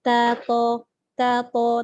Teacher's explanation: Ta dengan ta. Ta dengan ta ni tempat keluar dia sama, iaitu hujung lidah belakang gigi atas.